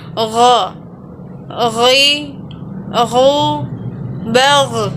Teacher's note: Huruf ini keluar dari tenggorokan yang terdekat dengan rongga mulut kita. Diucapkan dengan lembut suaranya tanpa mengalir udaranya. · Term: huruf gha